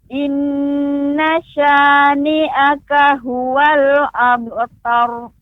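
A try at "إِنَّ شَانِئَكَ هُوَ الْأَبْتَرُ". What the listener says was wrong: Nunnya pendek Ibu. Nunnya pendek. Innasya.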